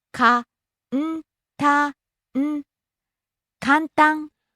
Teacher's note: Rising on the second syllable and staying high.